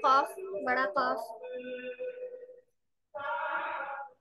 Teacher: जबान की जड़ जब कौवे के करीब से नर्म तालू से लगे तो इससे कॉफ अदा होता है